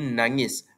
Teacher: Dua konsonan N dan G diucapkan serentak dalam satu suku kata pertama nang menghasilkan bunyi ng sebelum vokal e pada suku kata kedua itu konsan rangkap dalam perkataan nangis iaitu ng gabungan N dan G. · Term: konsonan rangkap